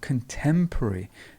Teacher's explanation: notice how the stress is in the middle